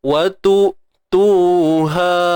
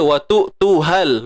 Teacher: Tapi kalau kita sambung, dia tak jadi mat dah. Mat ni digugurkan bacaannya. Sebab apa? Berlakunya iltiqa' sakinain, pertemuan dua sukun.